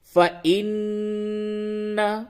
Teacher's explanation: نون کی آواز کو ناک میں لے جا کر کے گنگنایا جاتا ہے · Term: غنہ